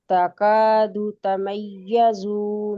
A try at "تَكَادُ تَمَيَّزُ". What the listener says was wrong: زو لمبا ہو رہا ہے.